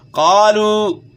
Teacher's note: قاف کو آپ نے موٹا پڑھنا ہے، اس کے بعد الف مدہ ہے اور واو مدہ ہے، اس کو آپ نے کھینچنا ہے